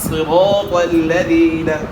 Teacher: صاد کو موٹا کرنا ہے, صاد کے نیچے زیر ہے, اس میں آپ نے خیال کریں صاد موٹا ہو, سرا نہیں پڑھنا. سرا پڑھا تو پھر سین ہو گیا, صاد نہیں ہوگا.